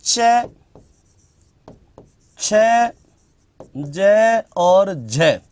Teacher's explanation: वे व्यंजन जिनके उच्चारण में उच्चारण का समय अपेक्षाकृत अधिक होता है और उच्चारण के बाद वाला भाग संघर्षी हो जाता है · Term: स्पर्श संघर्षी व्यंजन